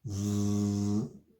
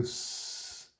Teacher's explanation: Z is basically a voiced S. Just I think of it as sharpened, like the zigzags, sort of a sharpened S, basically.